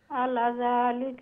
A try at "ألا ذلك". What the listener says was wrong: আলা লামর বাদে আলিফ আছে, আলা যালিকা খালিফ লম্বা